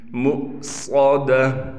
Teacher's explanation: مؤصدہ، صاد موٹا ہے لہذا صاد کو موٹا بھی کر کے پڑھیں گے اور صاد میں سیٹی بھی ہوگی